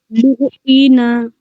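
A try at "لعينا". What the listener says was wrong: जी, आइन की आवाज हलक से निकालिए. लुईना, लुईना. आइन में थोड़ा सा आप खींच दे रही हो, ओके, ध्यान रखिएगा. लुईना. हाँ, एक बात भी हम लोगों ने मेजर मिस्टेक्स में जाना था ना कि हरफ को खींचने से गुनाह होता है.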